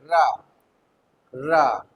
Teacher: देखो पार्श्विक का मतलब होता है जीभ के किनारों से वायु का निकलना, और लुंठित का मतलब होता है जीभ का मतलब मुड़ना। और रा, रा में देखो झंझनाहट पैदा होती है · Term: झंकृत